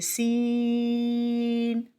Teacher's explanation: سین ادا کرتے ہوئے سیٹی کی آواز آئے گی اور ناک کے اندر آواز لے کر نہیں جائیں گے۔ سین، سیٹی کی آواز کے ساتھ ادا کریں گے، ناک کے اندر آواز نہیں جائے گی۔